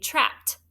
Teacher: that suffix e d like in our word for today trapped right sounds like a t